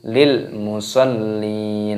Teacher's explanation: lemnya berharakat tasydid dimasukkan ditekan